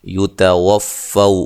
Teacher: یتوفو، فو وولین ہے اور تا کو باریک پڑھنا ہے، ٹھیک ہے۔ اس میں تا جو ہے یہ طا کی مانند نہ ہو، مشابہ نہ ہو